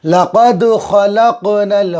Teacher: دال کے اوپر جزم میں قلقلہ ہوگا، آواز ٹکر کھا کے الگ ہو جائے گی ۔ لقد خلقنا، خا نکالیں گے، بڑا قاف نکالیں گے، نل،